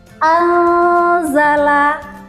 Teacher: nun sukun bertemu dengan huruf za. Nah, kita membacanya kita samarkan huruf nun sukunnya. Kemudian kita baca huruf zanya. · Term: ikhfa